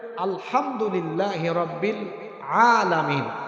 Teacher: এখন আইন উচ্চারণ হয় কোথা থেকে গলার মাঝখান থেকে